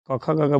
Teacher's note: जब ये क ख, ग बोलिएगा तो आपका जबान जाके तालू में सटेगा ऊपर